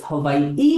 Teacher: the okina, which is like a glottal stop, kind of like a pause when you say it